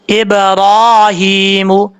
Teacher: قلقلہ کا مطلب یہ جو با ہے، ہونٹ دونوں آپس میں ٹکرائیں گے، فوراً واپس ہو جائیں گے تو یہ قلقلہ ادا ہو جائے گا. جیسے ابرا، اگر ہونٹ بالکل بند ہو جائیں گے تو کبھی بھی قلقلہ نہیں ہو پائے گا.